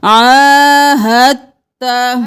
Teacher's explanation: ہا کو تا کے ساتھ ملائیں گے، ساکن کو چھوڑ کر مشدد حرف کو پڑھیں گے